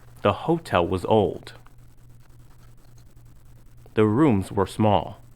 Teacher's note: the words was and were are usually unstressed when they come before another word in a sentence